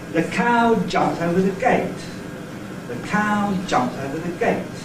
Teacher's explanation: instead of a stress on O, I have no stress on O in that utterance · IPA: /ðə ˈkaʊ ˈʤʌpmt əʊvə ðə ˈgeɪt/